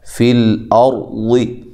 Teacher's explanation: لام کو ہلانا نہیں ہے، اور را کو موٹا کرنا ہے، ضاد کو موٹا کرنا ہے